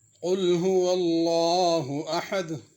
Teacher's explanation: سب سے پہلے تو قل کا قاف موٹا ہے، اس کو پر کر کے پڑھنا ہے۔